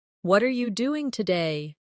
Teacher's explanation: The stress usually falls on what and doing.